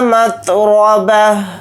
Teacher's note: را کے اوپر زبر ہے، را کو موٹا یعنی پر پڑھیں گے